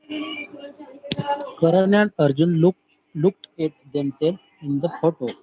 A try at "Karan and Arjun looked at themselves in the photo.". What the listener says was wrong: Start again. Themselves. Self नहीं, themselves.